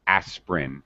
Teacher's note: most people drop the middle syllable. This middle I aspirin.